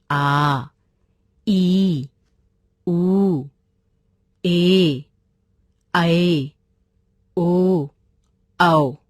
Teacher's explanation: जिन स्वरों के उच्चारण में ह्रस्व स्वर से दुगना समय लगता है उन्हें दीर्घ स्वर कहते हैं, जैसे आ, ई, ऊ, ए, ऐ, ओ, औ।